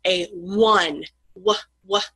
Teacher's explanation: a instead of an will be when the vowel O makes a W sound. So there's another instance of a vowel imitating a consonant.